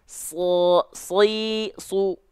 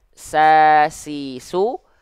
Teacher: Jadi huruf shad itu adalah huruf sin yang ditebalkan.